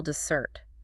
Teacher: The stress falls heavily on the second syllable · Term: word stress